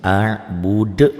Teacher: Karena ini hurufnya hidup dimatikan, qalqalah kubro yang besar.